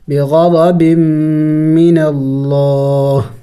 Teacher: کرنا ہوتا ہے، وَبَاءُوا بِغَضَبٍ، بغضب، با میم دو زیر، بیم، میم مشدد ہے غنہ کریں گے